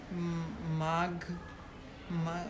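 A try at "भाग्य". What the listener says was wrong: Ma. It is bha. Bhagya.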